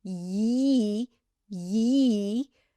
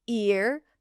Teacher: So your tongue goes up for the y as in yes, then stays there and pushes a little bit for the e. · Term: y sound